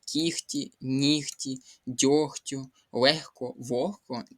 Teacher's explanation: вони уподібнюються за глухістю. Це означає те, що г переходить у х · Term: уподібнення за глухістю